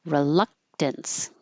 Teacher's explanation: And some people do say reluctance, that's fine, but the more common, the RE is not stressed, so it'll be R or re.